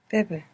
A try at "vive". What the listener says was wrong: Some vowel harmony you're making there. The E is correct, but you changed the beginning to match that E. Vive.